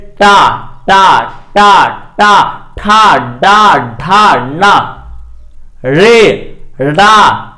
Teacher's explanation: ट बोले तो जीभ कहां सटा? मुख के मूर्धा वाले भाग को टच किया, इसीलिए उसका नाम पड़ा मूर्धन्य वर्ण।